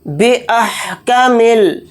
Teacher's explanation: हमज़ा को हा साकिन के साथ मिलाकर पढ़ेंगे